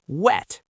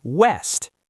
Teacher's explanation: But the W sound is bilabial. It uses both lips. Your teeth should never touch your lip for a W. You round your lips like you're going to kiss someone, and then you open them.